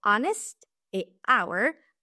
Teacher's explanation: il existe des exceptions, comme le mot honest et hour, où le H ne se prononce pas